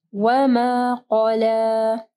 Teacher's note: قاف کو ہیوی پڑھنا ہے، پھر لام کو جو ہے نرم پڑھنا ہے۔